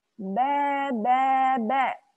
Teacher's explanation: Ba di mana makhrajnya ba? Diletakkan di kedua bibir.